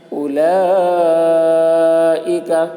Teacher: لام کے اوپر کھڑا زبر ہے، کھڑا زبر برابر ہوتا ہے الف مدہ کے، اس لیے کھڑا زبر کو ایک الف کے برابر کھینچ کر پڑھیں گے۔ حرف مد کے بعد حمزہ اسی کلمہ میں ہے، اس لیے مد متصل ہوا، مد متصل کو 3 یا 4 الف کے برابر کھینچ کر پڑھیں گے۔ · حمزہ کے اوپر پیش ہے، پیش کو جلدی پڑھیں، تھوڑا بھی نہ کھینچیں، معروف پڑھیں، مجھول آواز سے بچیں۔